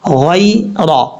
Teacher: آپ کو پتہ ہے کہ میں نے بتایا تھوڑی دیر پہلے، یا ساکن سے پہلے زبر ہو تو یا لین ہوتا ہے، یعنی یا لین سے مراد اس کو لمبا نہیں کریں گے، شارٹ کٹ پڑھیں گے